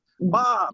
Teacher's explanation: Like if you're yelling, like he says, when you yell Bob down the street, you're only really hearing the first B. The second B is very light because all it's doing is your lips. Like Bob. Look, you didn't hear my second B.